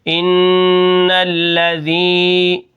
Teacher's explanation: یا مدہ ہے، اس کو ہم ایک الف کے برابر کھینچ کر پڑھیں گے